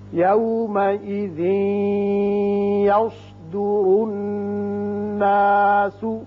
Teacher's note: یوس سواد پر پڑھتے ہیں, را کے اوپر پیش ہے یہ بھی پر ہوگا, اور نون مشدد ہے یہاں غنہ کریں گے